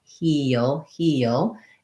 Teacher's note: First of all, knowing that what the sounds are in heel. We have a tense E sound. We have the dark L